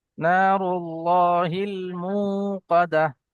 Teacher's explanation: নারুল্লাহিল মুকাদাহ, মু একালি পরিমাণ টান হবে। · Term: ও মাদ্দা